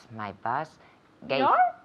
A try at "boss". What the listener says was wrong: Tu autobús? This is a very common mistake, okay? Sometimes people say boss and it sounds like bus, and sometimes people say bus and it sounds like boss, okay? Boss with an O and bus like with an A sound, okay?